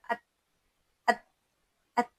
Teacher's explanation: ان تینوں حروف میں صفت شدت ہے، یعنی آواز رک جاتی ہے وہیں پر